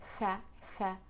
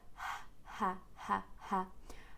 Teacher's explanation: the first sound is just a very light out breath. Make sure that you don't use your tongue, the back of your tongue, to say it.